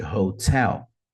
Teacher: Hot então a sílaba deve ser a mais forte